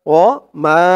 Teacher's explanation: মা তিন আলিফ টান মধ্যে মুনফাসিল